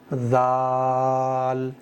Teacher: زبان کی نوک تھوڑی سی باہر نکالو اور بہت نرمی، بہت سافٹلی پڑھو